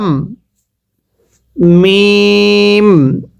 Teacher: মিমটা উচ্চারণের সময় দুইটি ঠোঁট একসাথে মিলিয়ে দিবেন